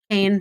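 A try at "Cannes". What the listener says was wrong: It's pronounced Khan, not Kane.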